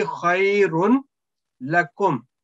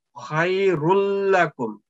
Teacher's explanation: But when we are going to join together, assimilation, merging together, then noon sound will disappear, and we will say khairul lakum.